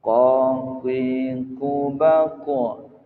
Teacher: yang keluar dari pangkal lidah adalah qaf.